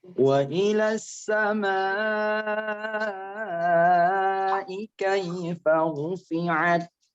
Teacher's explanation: mad wajib muttasil panjangnya ada 6 harokat